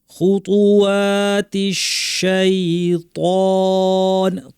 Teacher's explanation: তিশ শিন জিব্বা মাঝখান থেকে স্পষ্ট আওয়াজ